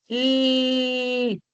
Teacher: Cuando haces el sonido de la L, te das cuenta que la punta de tu lengua está apoyada en la zona alveolar. L. Ese es un ejemplo de un sonido alveolar.